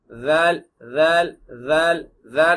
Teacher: அப்படி சொல்லும்போது நாக்கு உயருதோ அதுல ஒரு தடிப்பு தன்மை வருதோ அந்த மாதிரி இந்த வா என்பதை சொல்லும் பொழுது ஒரு அதிர்வும் ஒரு தடிப்புத்தன்மையும் ஏற்படும்